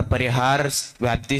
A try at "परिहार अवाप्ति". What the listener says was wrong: इसमें आप सभी एक शब्द गलत उच्चारण कर रहे हैं, परिहार अवाप्ति व्याप्ति नहीं है वहां, है ना, व्याप्ति शब्द दूसरे अर्थ में आएगा, परिहार अवाप्ति सामान्यम